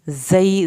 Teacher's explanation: ज़ा को सख्ती से पढ़ें, या को खींच के